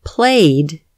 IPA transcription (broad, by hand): playd